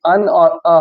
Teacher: अनुनासिक स्वर इसको बोलते हैं हिंदी में, क्योंकि ये नाक से और गले से बोला जाता है